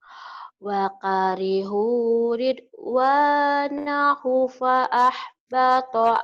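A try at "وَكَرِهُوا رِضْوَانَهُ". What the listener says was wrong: Punya panjang. Ridwanahu. Manisila kosiro kan panjang. Wakarihu ridwanahu fa'ahbata a'malahum.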